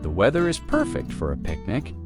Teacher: Stress perfect to express the feeling.